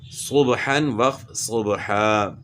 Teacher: اور دو زبر جو ہے نا الف سے تبدیل ہوتے ہیں